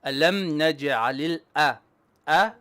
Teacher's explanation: don't make your alif heavy. Alif is flat.